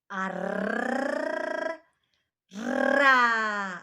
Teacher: Ал енді рын айту үшін біз міндетті түрде тілімізді дірілге келтіру керекпіз.